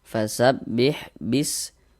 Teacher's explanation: Huruf ro memiliki harakat fathah nih. Maka huruf ro dibaca tebal dibaca tabkhim sehingga pangkal lidah kita naik terangkat ke atas. Tebalkan huruf rnya.